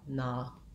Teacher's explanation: An accent error pattern that may happen for this, it'll sound more like O or aw. And in American English, we say that with an open vowel, na, just like the word not.